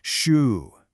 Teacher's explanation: The Mandarin sh sound is pretty close to what we already do in English. Think about the sound in shoe. It's a soft, continuous stream of air.